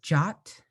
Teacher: the second part of my name is jot um my voice just kind of goes up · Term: high tone